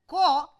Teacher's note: So, there is no voicing during the occlusion, that is why it is called unvoiced plosive, unvoiced velar, unvoiced. Since VOT does not carry any aspiration, then it is called unaspirated sound. So, unvoiced, unaspirated, velar, plosive.